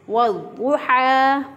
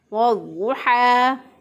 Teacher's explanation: तो हम इसको पढ़ेंगे वज़्ज़ुहा, हा खड़ी ज़बर हा, एक अलिफ के बराबर इसको खींच के पढ़ेंगे। इसको हा को वस्ते हलक से अदा करेंगे और इसको एक अलिफ के बराबर खींच के पढ़ा।